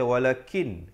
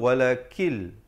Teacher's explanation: nun mati bertemu lam idgham bila gunnah. Jangan baca walakin.